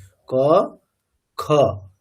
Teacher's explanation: আপনি ক খ মানে যদি আপনি অস্পষ্ট খ বলেন তখনই শক্তি কম লাগবে। স্পষ্ট খকার উচ্চারণ করলে আপনার ক এর তুলনায় শক্তি বেশিই লাগবে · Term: মহাপ্রাণ